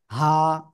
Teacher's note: গলার শুরু থেকে উচ্চারণ হবে হা, একালিপ টান